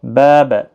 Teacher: یہاں پر الف مدہ ہے، ایک الف کی مقدار کے برابر کھینچیں گے۔